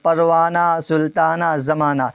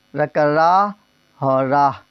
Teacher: ہائے مختفی جو تلفظ میں نہ آتی ہو، جو پڑھنے میں آخر میں سمجھ میں نہ آتا ہو